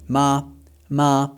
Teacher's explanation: This is a high level tone, and we will use the word ma to demonstrate. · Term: first tone